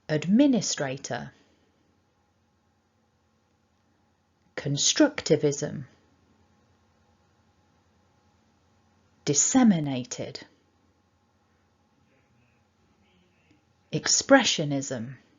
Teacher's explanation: So first of all, looking at a selection of words then, remember we're focusing on 5 syllables in this video, and the stress pattern we've got here is that we've got one main stress and it's on the second syllable